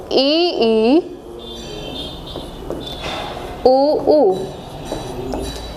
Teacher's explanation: जो संवृत होता है वो बिल्कुल एकदम क्लोज, जिसमें मुख लगभग बंद सा ही रहता है